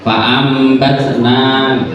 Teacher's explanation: Diganti dengan mim mati. Jadi nunnya atau tanwinnya apabila bertemu dengan ba itu diganti dengan mim. Makanya bunyinya fa'am ya, bibir fa'am batna gitu. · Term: iklab